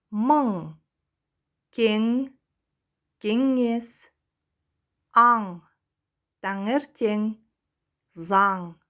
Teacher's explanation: При произнесении звука «ан» кончик языка опускается к нижним зубам, задняя часть языка тесно прижимается к заднему небу. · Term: сонорный носовой звук